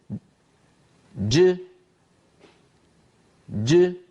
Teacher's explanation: هكذا الحرف الشديد المجهور يكون محبوسا ثم ينطلق صوته. بينما لو انتقلنا إلى اللوحة التالية، انطلاق النفس بعد انحباس الصوت في الحرف الشديد المهموس، جريان النفس بعد انحباس الصوت في المخرج عند نطق الحرف الشديد المهموس، وذلك في الكاف والتاء.